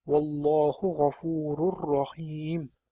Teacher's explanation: sukunni nun tovishi yoki tanwin va roga yo'liqqanda na tovushi umuman tushirib qoldiriladi hamda rni o'zi o'qiladi va bu yerda g'unnasiz o'qiladi